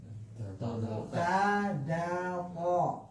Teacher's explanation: ujung lidah ke pangkal gigi seri atas